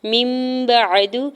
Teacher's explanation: من بعد، میم کی زیر کو نون ساکن کے ساتھ ملاتے ہوئے اقلاب ہوگا کیونکہ نون ساکن کے اوپر چھوٹی میم اور اگلا حرف با ہے، تو یہاں پہ نون ساکن کی آواز کو میم میں بدل کے غنہ کرتے ہوئے پڑھیں گے